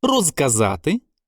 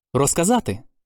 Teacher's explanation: у префіксах роз без перед наступним глухим залежно від темпу вимови може звучати і дзвінко і глухо